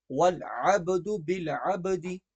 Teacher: یہاں پر با پہ قلقلہ ہوگا